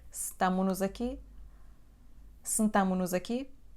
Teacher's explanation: Também a letra S, no fim do verbo, vai desaparecer.